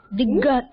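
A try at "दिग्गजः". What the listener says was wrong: இது வந்து ஒரு ரெண்டு க சவுண்ட் வரணும். அதுல வந்து ஒரு க தானே வருது.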